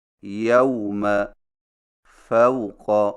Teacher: واو لین کی ادائیگی، واو لین کو واو مدہ کی طرح کھینچ کر نہیں پڑھا جاتا بلکہ اسے نرمی کے ساتھ بغیر کھینچے پڑھا جاتا ہے